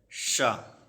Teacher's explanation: भीतर की छत से अगला भाग का प्रयोग करते हुए बोला जाता है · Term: मूर्धन्य